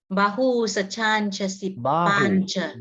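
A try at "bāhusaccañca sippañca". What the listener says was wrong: Bahu, not Bahu. Bahu. There's a long A here, see?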